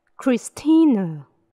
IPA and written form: krɪˈstiːnə (Christina)